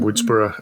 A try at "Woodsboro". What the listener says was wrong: I like that you said Woodsboro as though it's how we would say Edinburgh. Because they would say Woodsboro. How they tell you to say it.